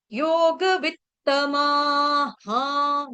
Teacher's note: विसर्ग से पहले क्या है मा है तो विसर्ग का उच्चारण हा हो जाएगा · डबल त पहला त आधा दूसरा त पूरा